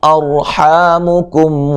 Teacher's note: آگے میم ساکن کا اظہار ہے. اور را کو موٹا ادا کریں گے. را ساکن سے پہلے زبر ہے. حا الف مدہ ہے.